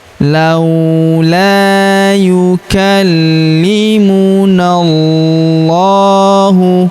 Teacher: Alifnya di depan huruf na tidak dibaca lagi karena huruf na langsung masuk ke lafaz Allah atau lafzul jalalah ya.